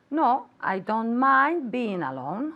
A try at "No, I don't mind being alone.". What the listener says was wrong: Very good. Y quiero escuchar esa D.